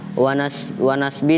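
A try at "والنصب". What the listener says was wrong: Itu kitab kalian kurang lam. Itu kan wansib ya. Ah, tambahin lam itu wan nasbi.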